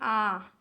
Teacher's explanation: विवृत यानी कि पूरा मुंह खुला हो। जब इसका उच्चारण करते हैं विवृत का, तो मुंह जो है पूरा खुला होता है, जैसे आ।